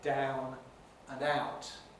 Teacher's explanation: the very widespread pronunciation in the southeast of england involves the first element being like ah